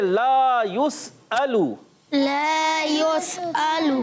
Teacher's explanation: और लाम अलिफ ज़बर ला, अली मद्दा के साथ एक अलिफ खींच कर अदा करना है। एक अलिफ यानी 2 हरकत की मिकदार खींचेंगे।